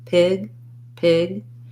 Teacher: i have to hold the vowel a little longer